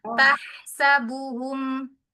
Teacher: Tahsabuhum haknya di tengah tenggorokan